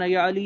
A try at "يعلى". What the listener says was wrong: یعلا لفظ ہے کہ یعلی نہیں پڑھیں گے، یعلا، یعلا بن امیہ.